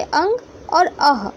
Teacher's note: अंग में न का उच्चारण आ रहा है और अह में अ के साथ ह का उच्चारण आ रहा है, इसलिए ये अंग और अह स्वर की गिनती में हम नहीं रह सकते। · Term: अयोगवाह